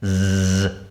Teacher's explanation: when the S is found in between two vowels okay people in the north pronounce it as a z sound Z instead people in the South pronounce it as a s